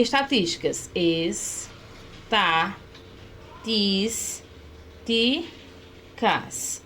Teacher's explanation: Porque toda proparoxítona recebe acento, é acentuada. Ou seja, possui a sílaba tônica na antepenúltima posição